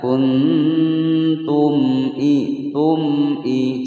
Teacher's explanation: mim sukun bertemu hamzah dibaca jelas, tidak boleh sahabat membaca dengan dengung atau memantul. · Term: izhar syafawi